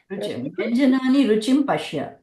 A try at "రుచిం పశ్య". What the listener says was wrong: ఉత్తమం ఉత్తమం.